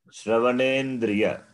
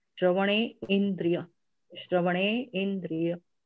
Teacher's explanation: I'm not pausing after Shravane